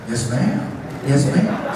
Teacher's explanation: he's much more breathy than I am